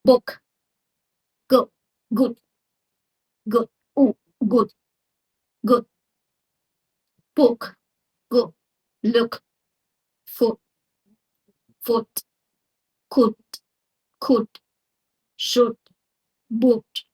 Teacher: It's not a tense or long as ooh which we hear in words like food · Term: The oo sound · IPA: [ʊ]